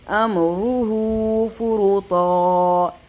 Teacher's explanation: را کو پر کریں گے کیونکہ اس کے اوپر ہے پیش